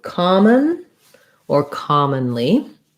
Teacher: both common and commonly have first syllable stress. The letter O says the ah sound, so ka.